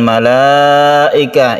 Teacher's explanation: ini adalah mad wajib muttasil karena dia panjang, kemudian bertemu dengan hamzah dalam satu kalimat, maka kita sebut mad wajib muttasil panjangnya 2,5 alif.